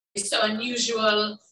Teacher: it's almost like she's adding in an extra syllable there